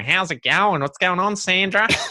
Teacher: this much more nasally thing going on and longer vowels and you know so it's a lot more drawn out and